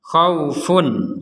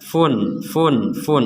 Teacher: jadi di sini ada tanwin bertemu Ain kita membacanya dengan jelas khaufun jadi betul-betul funnya ini dibaca dengan jelas fun fun fun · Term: dibaca jelas